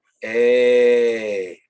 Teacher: you start off with a and then you just bring your vowel down to e